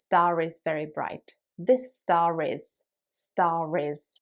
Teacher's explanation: if you want to say this star is really bright then the r sound at the end of star will be pronounced like in american english because there is a vowel that follows it so it will sound something like this star is very bright · these words merge together so they kind of become almost one sound and you need to pronounce that r in the middle